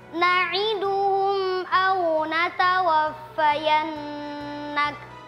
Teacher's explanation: Mim sukun bertemu huruf hamzah dibaca jelas.